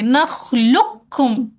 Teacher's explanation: جو گروپ کہتا ہے یہاں پہ ادغام تام ہوگا وہ کیا کریں گے، موٹے والے قوف کو پورا پورا ڈراپ کر دیں گے، ادغام تام کر دیں گے، نخلقکم، ڈائریکٹ باریک والا کاف ادا کر دیا